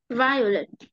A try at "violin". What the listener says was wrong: À, vire nha, đừng đọc vái, mình đi thi mình lại đánh cái âm nhắn âm một á. Vire, lean, violin.